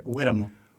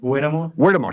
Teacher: You don't pronounce the H, right? You pronounce it kind of like with the W, like a W sound.